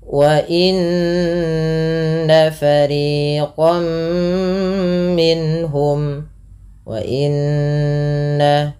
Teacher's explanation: tahan bunyi suara nun yang berharakat tasydid karena ia dikategorikan bacaan ghunah.